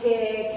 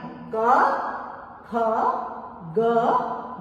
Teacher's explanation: कै खे नहीं बोलना है, क के साथ अ की आवाज लानी है